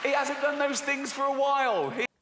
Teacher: sometimes in this accent h is not pronounced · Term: h dropping